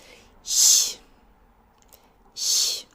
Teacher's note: It's with the tongue further forward and high in the mouth making a very shallow place for the air to go through